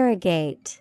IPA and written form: ˈɪrɪɡeɪt (irrigate)